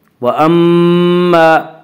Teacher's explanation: وَأَمَّا الف مدہ، الف ہمیشہ مدہ ہوتا ہے، الف سے پہلے زبر ہوتا ہے، الف مدہ کو 1 الف کے برابر کھینچ کر پڑھیں گے